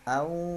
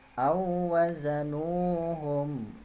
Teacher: Au didengung karena dia huruf waw. Waw ketemu waw, sukun didengung.